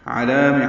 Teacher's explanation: علام عین وسط حلق سے ادا کریں گے، لام کو باریک پڑھیں گے اور 2 حرکات لمبا کریں گے